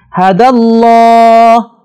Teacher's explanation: لفظ اللہ سے پہلے زبر ہے، اسے ہم نے موٹا پڑھنا ہے